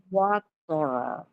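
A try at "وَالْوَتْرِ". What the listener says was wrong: Itu mah wator. Itu mah taknya ketebelan. tebal. Jadi water. Water. Water. Water.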